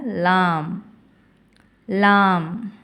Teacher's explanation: நாவின் நுனி மேல்முறசை தொடும் பொழுது ஒளிக்க பெறுகிறது